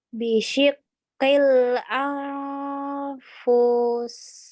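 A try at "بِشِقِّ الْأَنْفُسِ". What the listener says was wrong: Boleh benar kecuali fa-nya nggak panjang, sayang. Angnya yang nggak panjang fa-nya. Dengungnya tebel. Dengungnya panjang 3 harokat.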